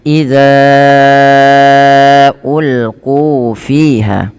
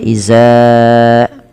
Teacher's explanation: Bila kita perhatikan pada lafal idza ulqu fiha, di sini pada lafal zal, ya, hati-hati jangan sampai terbaca dengan z, ya, atau dengan zai, jangan dibaca iza, dan panjangkan huruf za di sini sepanjang 4 atau 5 harokat karena ia ada mad jaiz munfasil.